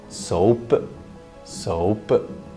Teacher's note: for Scottish, they release it. It's explosive.